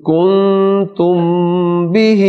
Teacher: کن پر جو غنہ ہے وہ اخفا ہے نون کا